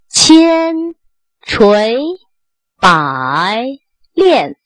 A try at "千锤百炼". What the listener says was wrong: 这 个 千 发 的 稍 微 有 点 短 ， 而 且 还 有 点 抖 。 千 不 是 千 就 不 发 了 。